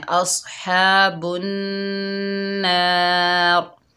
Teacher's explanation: जब हम वफ़ करेंगे तो रा मोटी पड़ जाएगी